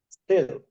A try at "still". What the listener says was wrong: Still, you said style. This is a style and this is still. So this is style and this is still.